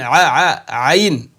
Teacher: आईन नहीं बोलना है हलक से निकालना है